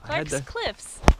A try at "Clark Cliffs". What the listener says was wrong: It's not Clark's, it's Clark Cliffs.